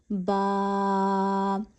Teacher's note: ہمارے ہونٹوں کے 2 پارٹس ہوتے ہیں، ایک ہوتا ہے آؤٹ سائڈ باہر والا حصہ، ایک ہوتا ہے ان سائڈ اندر والا گیلا حصہ۔ تو جو باہر والے حصے کے ساتھ ملا ہوا گیلا حصہ ہے وہ آپس میں ملانا ہے اوپر اور نیچے کا